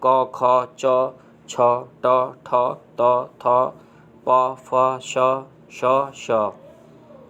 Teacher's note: जिन वर्णों के उच्चारण में नाद की जगह केवल श्वास का उपयोग होता है उन्हें अघोष वर्ण कहते हैं।